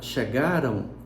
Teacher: Na palavra chegaram, eu não tenho nem O, nem U na escrita. mas eu tenho essa sonoridade de U na pronúncia. Por isso existe um glide aí.